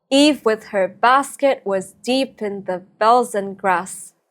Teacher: We have ductils, stressed syllables followed by two unstressed syllables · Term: dactil foot, dactyls